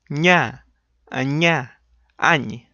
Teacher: So, like I told you, mid of your tongue behind the ridge and expel air from your nose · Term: palatal nasal